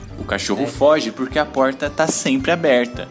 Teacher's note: retroflexão indo até o fundo da boca